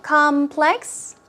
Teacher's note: first syllable stress so it's obviously a noun